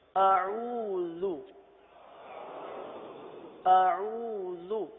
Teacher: حمزہ اور عین میں فرق ہے۔ حمزہ سختی کے ساتھ ادا ہوتا ہے، عین نرمی کے ساتھ ادا ہوتا ہے